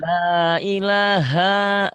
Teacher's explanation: Ilahnya jangan panjang. La ilaha, tekan ke H. Ilahnya cuma 2 ketukan.